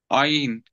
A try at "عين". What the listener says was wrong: நாக்கு அசையணும் சவுண்ட் கீழ் நோக்கி போகணும். நீங்க ஆயின் ஆ மேலுக்கு சவுண்ட் போகுது. அலிஃபில் இருந்து தான் ஐனை உருவாக்கணும். அந்த ஏட உச்சரிப்புல இருந்துதான் நாங்க ஐனை உச்சரிக்க வேண்டும். ரெண்டுமே கீழ் நோக்கி தான் இருக்கும். சின்ன வித்தியாசம் என்ன? நாவினுடைய முன்பகுதி அல்ல. நீங்க முன்னுக்கு தான் தூக்குறீங்க. நீங்க இங்கனைக்கு ஆண் ஆண்டு நாக்க தூக்கினா வேலை வேலை இல்லை. நாவின் இறுதி பகுதி எங்க இருக்குது? பின்னிக்கு தொண்டையோட இருக்குது.